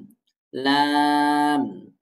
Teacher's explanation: ডিব্বার আগার কিনারা সামনের উপরের দাঁতের মাড়ির সাথে লাগিয়ে লাম উচ্চারিত হয়